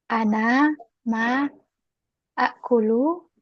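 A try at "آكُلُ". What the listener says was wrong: Akulu jadi panjang kemarin. Akulu jadi Panjang. Akulu. Asalnya akulu betul tadi. Betul ini. Akulu bertemu dua huruf Hamzah pertama hamzah mudhari ana. Hamzah kedua hamzah asli akala. Lalu hamzah yang asli ini diganti menjadi alif mat. Akulu.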